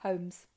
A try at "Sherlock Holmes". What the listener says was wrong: It's got an L in it.